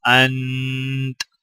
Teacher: چونکہ تا کے اوپر زبر ہے، وقف کرتے وقت تا کو ہم سکون کی حالت میں پڑھیں گے، اور تا سے پہلے نون کے اوپر بھی جزم ہے تو لہٰذا دونوں الفاظ کو سکون کی حالت میں ادا کیا جائے گا۔